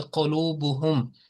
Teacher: اس کو 1 سیکنڈ کے لیے میم کی آواز کہی جاتی, اس کو لمبا نہیں کیا جاتا. تو یہ ایسے ہوگا کہ قلوبہم, تو اس میں ہلکا سا بھی اگر غنہ آ جائے تو وہ پھر اس میں وہ قواعد کے مطابق نہیں رہتا. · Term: اظہار